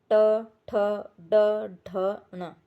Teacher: जिन व्यंजनों का उच्चारण मूर्धा से होता है। इस प्रक्रिया में जीभ मूर्धा का स्पर्श करती है · जो हमारा जो जीभ है वो मूर्धा को स्पर्श करती है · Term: मूर्धन्य